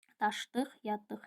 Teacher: Daşdıq şəklində tələffüz olunur. Vurğusu ikinci hecadadır.